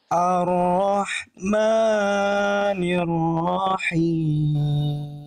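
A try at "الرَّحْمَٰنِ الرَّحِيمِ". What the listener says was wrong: Maknya jangan kepanjangan. 2 harokat. Ar-Rahmanir-Rahim. Ar-Rahmanir-Rahim.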